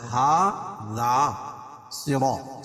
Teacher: ہذا کھڑا زبر قائم مقام الف مدہ کے، اور الف مدہ ذال کے اوپر، الف سے پہلے ذال کے اوپر زبر ہے تو الف مدہ ہوگا. ہذا صراط، صاد کو پور پڑھیں گے، را بھی پور پڑھی جائے گی